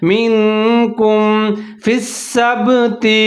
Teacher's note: نون ساکن کے بعد حرف کاف آ کیا ہے، حروف اخفا کا، تو یہاں پر میں نے اخفا کیا ہے